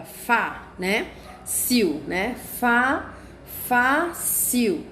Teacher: eu posso ver que a minha sílaba tônica é na minha primeira sílaba